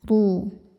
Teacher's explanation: Qala khruj. Huruf ra dibaca secara tafkhim karena ra berharokat dhammah. Cara bacanya ra ditebalkan.